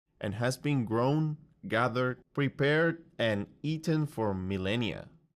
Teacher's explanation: Grown, gathered, prepared, and eaten all have upwards intonation to show he's giving a list. And then millennia has downwards intonation to show the list is finished.